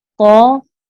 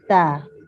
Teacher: قو کو ہم نے موٹا ادا کیا اور تا کو ہم نے باریک ادا کیا